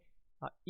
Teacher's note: बट यहाँ पे ई जो है तो ई हम लेते हैं समृद्ध स्वर में, क्योंकि ई बोलते समय जो है हमारा मुंह कम खुलता है